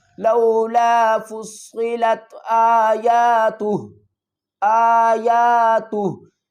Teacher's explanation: الٹا پیش کو ڈراپ کر دیں گے، تا کو ہم ہا سے ملائیں گے، ہا کو ساکن کر دیں گے